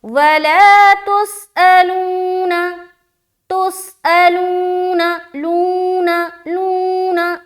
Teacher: वला तुसअलूना, तुसअलूना, लूना, लूना, लू में प्रेशर डाल रहे, क्यों, क्योंकि हम वहां पर खींच रहे हैं। वामद्दा होने की सूरत में एक अलिफ की मकदार के बाकदर हम खींच रहे हैं, इसलिए वहां हम प्रेशर डाल रहे हैं, लंबा कर रहे हैं।